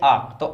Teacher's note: हमारे जो ओठ होते हैं, वह क्या होते हैं, इसमें गोल आकार नहीं ले पाते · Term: अव्रत मुखी